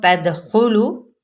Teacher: یہاں پہ نون پہ اخفاء حقیقی، دال پہ کلکلا